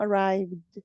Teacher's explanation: están dando la pronunciación que es una d al final no no suena la e pero suena la de